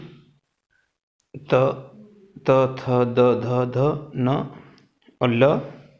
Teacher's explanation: दंत दंता, इनका उच्चारण दांत से होता है। उच्चारण जीभ हमारी दांत की सहायता लेती है, जीभ हमारी दांत को टच करती है।